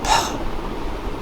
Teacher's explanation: In the case of pa, your vocal cords do not vibrate, and as a result, pa sound is a voiceless sound, and it is bilabial. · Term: bilabial voiceless sound